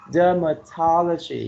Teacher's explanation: you put the stress on the first and the third syllable